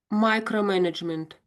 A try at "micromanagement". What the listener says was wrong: Yeah, yes, yeah.